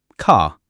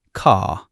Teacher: Let's talk about the R sound in a standard British accent. We are non-rhotic, which means we often don't pronounce the R at the end of a word or before a consonant